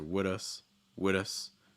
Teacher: that th is actually also kind of linking to become like a fast d sound as well